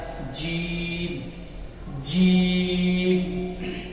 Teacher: جیم کا مخرج زبان کا بیچ اور اس کے مقابل اوپر کا تعلق۔ زبان کا بیچ اور اس کے مقابل اوپر کا تعلق، یعنی زبان کا وہ حصہ جو بیچ میں ہے اور اس کے مقابل اوپر کا جو تعلق ہے، جب وہ زبان اس سے لگتی ہے تو ادا ہوتا ہے جیم جیم۔